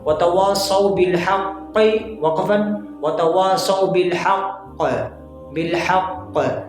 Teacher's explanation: कलकला अकबर होगा, यानी सबसे बड़ा वाला कलकला होगा